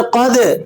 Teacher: جب ان پر جزم آتی ہے تو انہیں آپ نے ذرا جھٹکے کے ساتھ پڑھنا ہوتا ہے۔ قاف، طا، با، جیم اور دال، یہ 5 حروف ہیں، ان میں دال بھی شامل ہے اس لیے ہم یہاں دال کو جھٹکے کے ساتھ پڑھ رہے ہیں۔